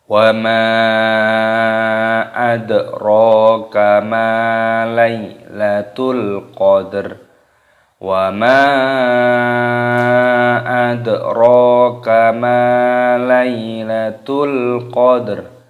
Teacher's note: Mimnya dibaca panjang, mad jaiz munfasil, dibaca 5 ketukan. Wa ma dalnya sukun dimatikan dan diqalqalah, dipantulkan suaranya.